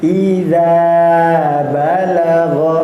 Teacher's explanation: Idanya panjang dua harakat. Idza balagh pendek saja tidak ada tiga harakat atau empat harakat